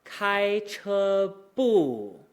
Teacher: The bu starts at the top of our register and then goes really low, right? That means that when we're coming out of first tones, we're just going to kind of slide out.